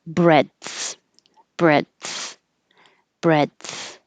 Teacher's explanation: block the airflow for a little bit and then release it and let the air go over your tongue for the TH. So there's a tiny pause, breadth, breadth, breadth.